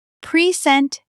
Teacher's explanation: When you stress the first syllable, present, it's a noun.